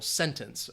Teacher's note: The stress I think would be on the first syllable